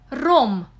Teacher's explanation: R represents the rolling or trilled consonants R and R, which correspond to the English R in rum, but are produced with the tongue vibrating against the hard palate or upper teeth under the pressure of the outcoming air